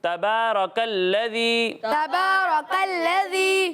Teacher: بعض بچے دونوں کو باریک پڑھنے اور بعض بچے دونوں کو پر پڑھنے, تو ایسا نہیں کرنا. را کو پر پڑھنا ہے اور کاف کو باریک پڑھنا ہے